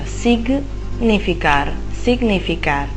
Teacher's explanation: Eh, dobbiamo stare attenti però quando poi troviamo GN in spagnolo perché non ha lo stesso suono. Quindi Gn in spagnolo non è gne, ma è gn. Quindi è come se fossero due suoni distinti.